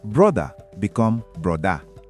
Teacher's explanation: For Pidgin, the R sounds softer than American R. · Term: the Pidgin R